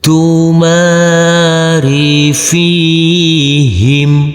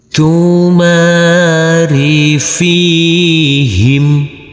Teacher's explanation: Huruf mim yang berfathah A ini bertemu dengan huruf alif yang tidak berharokat, kita baca panjang dengan panjang 2 harokat. Huruf fa yang berkasroh ini bertemu dengan huruf ya sukun, kita baca panjang dengan panjang 2 harokat.